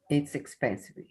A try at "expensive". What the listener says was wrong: Just be careful. Expensive. Ainda estou ouvindo I no final.